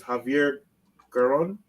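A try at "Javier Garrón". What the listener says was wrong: Put some Spanish in it. Put some Spanish in it, man. Roll your R, man.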